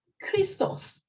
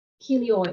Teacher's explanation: So in Greek, these stops are all voiceless. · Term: voiceless aspirates